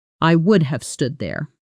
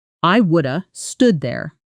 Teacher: Notice how would have often collapses into something closer to would've, almost woulda in fast, casual speech.